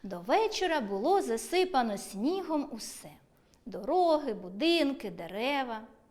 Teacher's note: Якщо узагальнювальне слово стоїть перед однорідними членами речення, то голос на ньому знижуємо, а перед однорідними членами робимо невелику паузу.